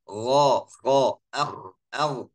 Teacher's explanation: Dua-duanya huruf isti'la, pangkal lidah naik, ya. Ya, yang buat suara tafkhim.